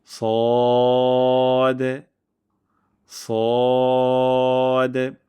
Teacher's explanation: জিহ্বার আগা এবং সামনের নিচে ২ দাঁতের আগা থেকে মোটা করে উচ্চারণ করব, যেন ঠোঁট গোল না হয়ে যায় · জিবার আগা এবং সামনের নিচে দুই দাতের আগা থেকে মোটা করে উচ্চারণ করব যেন ঠোটগুল না হয়ে যায় আমরা চেষ্টা করব এবং মোটা করতে আমরা জিহ্বার দুই সাইড অথবা জিহ্বা আলা জিহ্বার সামনে থেকে আমরা যদি জিহ্বাটা একটু মোটা করে দেই তাহলেই আমাদের এই মোটা হরফগুলো আরো মোটা শোনা যাবে। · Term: সদ